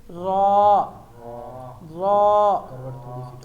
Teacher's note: اگلے جو دو دانت ہیں ان کے جب مسوڑے ہیں وہاں پر زبان ٹچ ہوگی. کتنی زبان کی کروٹ یہ موڑ کے تھوڑی سی موڑ.